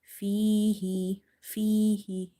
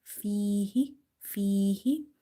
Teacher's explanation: Ya is madda because before ya sakina you have kasra. So read by stretching.